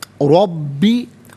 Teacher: रॉ पर ज़बर है, रॉ को पुर करके पढ़ेंगे, बा मुशद्दद है, बा को जमाव के साथ पढ़ेंगे